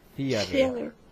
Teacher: the beginning is a TH sound. So you have to blow.